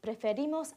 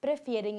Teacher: the stress in the nosotros and vosotros forms does not fall on the last stem vowel, but on the ending